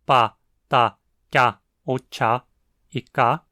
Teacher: Em relação à fonologia, o proto-urálico é reconstruído como tendo tido entre 16 e 18 consoantes, incluindo apenas 4 oclusivas, todas surdas